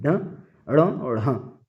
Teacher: जिन वर्णों का उच्चारण करने पर जीभ ऊपर उठकर तुरंत नीचे गिरती है उन्हें उत्क्षिप्त या द्विगुण व्यंजन